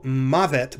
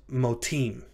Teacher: Mavet is the word meaning death, and when it is pluralized, the two syllables ma and ve are contracted to become mo. So the comets followed by the vav with a segol under it, that all contracts to simply a holem vav.